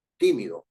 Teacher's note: La palabra tímido es una palabra esdrújula, porque tiene su fuerza de voz en ti, tímido, anterior a la penúltima.